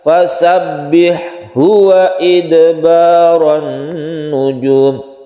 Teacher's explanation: meskipun makhrajnya sama tapi tidak diidghamkan, artinya tidak ditasydidkan ke ha. Ini tetap satu persatu. Fasabbih, ha-nya harus jelas, fasabbih huwa idbaran nujum. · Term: bukan idgham mutajanisain